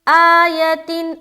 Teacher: آ کو بھی کھینچ رہے کیونکہ کھڑا زبر ہے، یتن۔ اب یہاں دیکھیں تا کے نیچے پھر 2 زبر کی تنوین آ گئی اور اس کے بعد آنے والا حرف پھر حمزہ ہے، لہٰذا یہاں پھر اظہار کریں گے۔